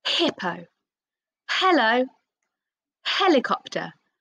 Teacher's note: it's very short and breathy because it doesn't say huh there's not an uh at the end of it